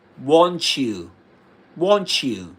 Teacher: there's a kind of fusion between the last sound in want and the first sound in the next word, in you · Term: coalescent assimilation